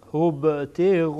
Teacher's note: با در اینجا قلقله میشه، یعنی تکان میدین.